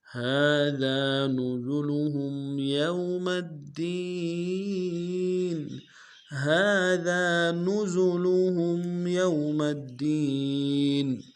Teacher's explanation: ہاں کے اوپر کھڑا زبر ہے، ایک الف دال میں کھینچیں گے، ذال کو باریک ادا کریں گے، ذال کے ساتھ الف مدہ ہے، اس کو بھی ایک الف دال میں کھینچیں گے۔